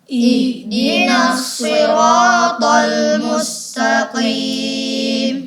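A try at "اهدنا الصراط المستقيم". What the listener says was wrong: Ya, sekali lagi, huruf shadnya kalau bisa kita jelaskan lagi.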